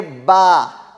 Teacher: با دونوں ہونٹوں کا تری والا حصہ, یہ ہو گیا با کا مخرج